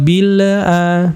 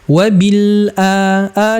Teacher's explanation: Lam bukan termasuk qalqalah, maka tidak boleh dipantulkan wabil.